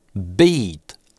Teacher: Представляйте в голове, что beat это два звука, примерно как русское «ый» или «ий», только от твердого «б».